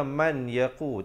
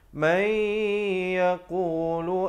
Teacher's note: bila nun mati bertemu ya, jangan lupa masuk beserta dengan 2 harakat. Hukumnya idgham bi gunnah.